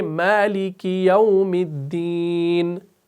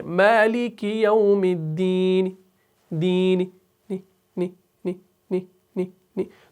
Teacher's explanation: یہ جو نی ساؤنڈ ہے نا یہ آپ نے اتنا آہستہ کرنا ہے کہ یہ سب نہ سنے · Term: وقف روم